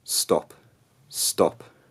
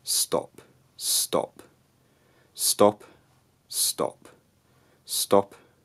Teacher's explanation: we will put in a glottal stop, which means we suddenly close off the part of the vocal tract. We close off a part of the vocal tract called the glottis, which means the sound beforehand stops suddenly. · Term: glottal reinforcement